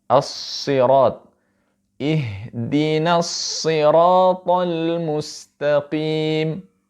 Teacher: Ihdinas siratal mustaqim. Ya, ada shad, ada ra, dan ada ta. 3 huruf ini dibaca tebal.